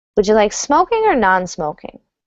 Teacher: That's going to have a downward intonation, even though it's a question.